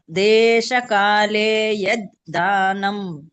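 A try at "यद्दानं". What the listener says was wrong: ಅಲ್ಲಿ ಯದ್ದಾನಂ ಅವಾಗ ನೀವು ಒತ್ತಿ ಯದ್ದಾನಂ ಅಂತ ಹೇಳಿ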